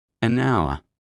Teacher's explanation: The H is silent. The first sound is hour.